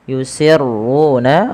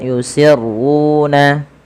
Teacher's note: ma di sini dipanjangkan 2 harakat, yusirruna, ru-nya tebalkan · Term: mad tabi'i